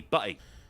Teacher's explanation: I mean, I'll drop the T. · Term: glottal stop